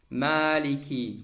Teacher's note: Mim istifəl incə hərfdir. Fəthəli a səsi verə bilməz heç vaxt.